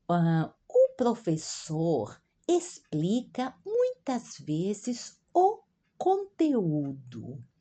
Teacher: o X diante de uma consoante, é o som de S sempre